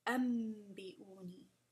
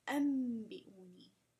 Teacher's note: An, and then bi'uni is how you write it. But when you join the an and ba sound, anbi'uni, it becomes ambi'uni. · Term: Iqlab